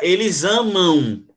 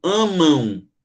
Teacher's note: É como se esse M aqui tivesse um som de U